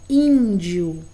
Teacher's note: Porque aqui em in, a gente tem um som vogal nasal.